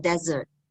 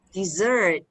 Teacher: stress is on the first syllable there are two syllables